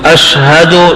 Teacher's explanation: شین میں آواز پھیل جائے اور ہا چھوٹی ہا ہے